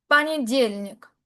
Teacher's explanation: Como la tilde recae en la y, la o la leo como una a